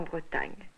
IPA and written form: bʁətaɲ (Bretagne)